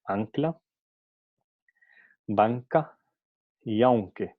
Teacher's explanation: Aquí la coarticulación, porque n normalmente es un sonido alveolar, ¿no? Pero por razones de coarticulación, n pasa a pronunciarse como una n velar